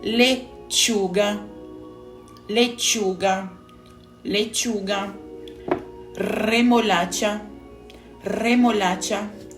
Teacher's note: se pronuncia com tom mais seco como o TSH do tchau